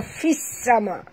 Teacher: kita masukkan bunyi fa baris bawah ni terus ke dalam sin tanpa membunyikan alif lam. Jangan baca lahu ma fil sama, bukan fil sama tapi bunyi dia fis sama. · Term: alif lam syamsia